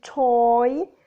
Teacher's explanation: position for long or oi moving up and forward towards e the lips start open and rounded and change to neutral